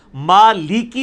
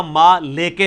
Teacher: البتہ قرآن میں جب لام زیر لی آئے گا نا تو لام زیر لی پڑھنا ہوگا، لام زیر لے نہیں پڑھنا ہوگا، ما لی کی پڑھنا ہوگا، ما لے کے نہیں پڑھنا ہوگا۔